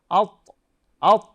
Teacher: ত উচ্চারণের জায়গা হলো জিহ্বার আগা এবং উপরের দাঁতের গোড়ার সঙ্গে আত আত, এবং এটি কলকলার হরফ, কলকলা করে উচ্চারণ করতে হবে।